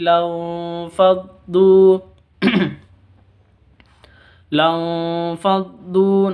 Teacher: non sukun bertemu dengan fa, samar disertai dengung. Lanfaddu, du panjang 2 harokat.